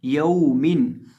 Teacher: या दबर वाव यौ, मीम दो देर मिन, यौ मिन। अब यहाँ भी हम वाव को लंबा नहीं करेंगे क्योंकि वाव साकिन से पहले ज़बर है। वाव या साकिन से पहले ज़बर हो तो उसे लंबा नहीं किया जाता।